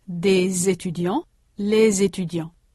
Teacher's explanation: the s is heard as a z before a vowel.